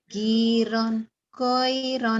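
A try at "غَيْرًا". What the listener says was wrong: Gak ada ronnya ya mah. Giro, goiro. Giro, goiro.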